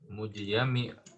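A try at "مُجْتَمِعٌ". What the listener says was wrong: Harusnya ta itu. Mujtami'un.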